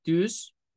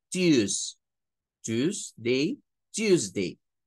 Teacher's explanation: Y si es Tuesday, pues sépase que eso le va a sonar más a American English. Parecería más inglés americano si usted lo dice con el sonido de la Y.